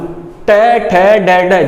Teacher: जीभ फोल्ड हो गई तुम्हारी, ऊपर लग गई कहाँ पे? मूर्धन्य।